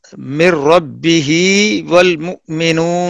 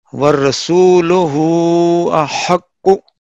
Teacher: ہائے ضمیر صلہ یعنی اشباع کے ساتھ پڑھی جائے گی. اس کے بعد واو مدہ اور یا مدہ کی آواز پیدا ہوگی